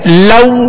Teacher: لو ہونٹوں کو گول کریں گے، لو یعنی معروف طریقے سے ادا کریں گے